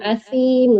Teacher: asim lembut, huruf sa, ujung gigi